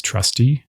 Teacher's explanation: Trusty ends with the shorter unstressed vowel.